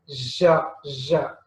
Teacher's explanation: the blade of the tongue raises towards hard palate and teeth ridge. Okay, so it rises to that place, and there is a narrow gap. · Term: ja sound